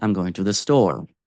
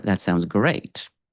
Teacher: in declarative statements, sentences, we lower the voice on the final syllable of the final word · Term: pitch drop